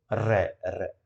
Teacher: जैसे जीभ के अंदर कंपन होता है, यह ऐसी लुढ़कती है। लुंठित यानी कि एक तरीके से लुढ़कना।